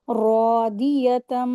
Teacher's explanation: गुन्ना करेंगे, इदगाम हो रहा है और इदगाम माल गुन्ना, मीम मुशद्दद गुन्ना करेंगे